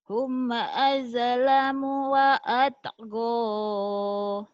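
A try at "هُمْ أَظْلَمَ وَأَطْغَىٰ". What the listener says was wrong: Hum azlama. Bukan azlamu, azlama. Ya.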